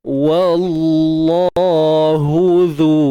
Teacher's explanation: Untuk zal keluarkan sedikit hujung lidah kita, kemudian panjangkan dua harakat mat asli.